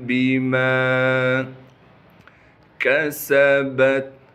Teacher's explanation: کل نفس بما کسبت، کاف کو باریک کر کے پڑھیں گے، سین میں سیٹی ادا کریں گے، با کو تا سے ملانا ہے کیونکہ تا ساکن ہے